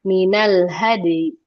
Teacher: membaca harokat ya kasro tapi dengan kadar yang lebih cepat dan lebih rendah suaranya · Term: rawum